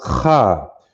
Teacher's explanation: it's pronounced Kha. You hear that guttural sound in your throat as opposed to Ka, which is a K-A over here, you see.